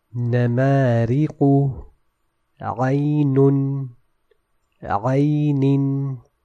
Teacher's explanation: In all these examples, the letter Noon was recited from both of its makhraj components. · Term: mutaharrik Noon